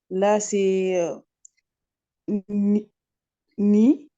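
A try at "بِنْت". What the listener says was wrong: Bi, Alors, ça, c'est bi, ça, c'est le noun. Bin, bin,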